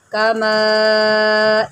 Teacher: یہ مد متصل ہے، آپ اس کو اڑائی الف کھینچ کے پڑھیں